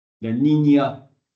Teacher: palatal l'air passe par le palais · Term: N paltisé